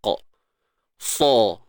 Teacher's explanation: huruf sa ni dia bersifat isti'la, iaitu terangkat je pangkal lidah. Kemudian terangkat pula yang bahagian depan lidah tu, sebahagian besarnya tu terangkat juga.